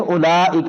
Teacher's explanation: یہ مد لازم ہے، اس کو 5 الف کے برابر لمبا کرتے ہیں، مد کے فوری بعد حمزہ آ جائے تو اس کو زیادہ لمبا کرتے ہیں، ٹھیک ہے.